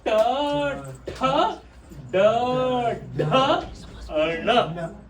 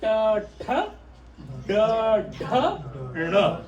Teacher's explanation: in this row, for every alphabet in this row, you have to take your tongue a little bit inside and roll it. Okay, roll it means it touches the roof of the mouth.